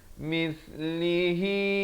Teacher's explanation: Mis di hujung lidah. Mislihi, dua harakat.